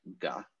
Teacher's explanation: Yeah, here we have it in this word, where it's just used to represent a K sound, because that distinction has been lost by the time the Rosetta Stone was written. But originally, it is probably a voiced velar consonant, so like ga, essentially like a G.